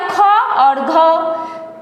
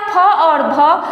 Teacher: जिसमें ह आकार की ध्वनि सुनाई पड़ती है उसे हम महाप्राण कहते हैं।